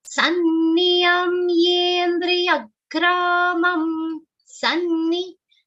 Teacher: Sanni, double na sound and it is a short sound.